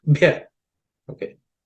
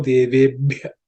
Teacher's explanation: That's the fourth letter in the pa varga, so it has to be aspirated.